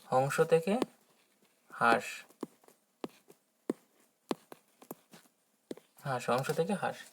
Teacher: এখানে কি হয়েছে, এই যে নাসিক্য ধ্বনি, সেই নাসিক্য ধ্বনি এখানে গিয়ে কিন্তু লোপ পেয়ে গেছে, কিন্তু লোপ পেয়ে গেলে কি হবে, তার পূর্ববর্তী স্বরকে অনুনাসিক করে তুলেছে, সুতরাং এটাকে বলবে নাসিক্য ভবন।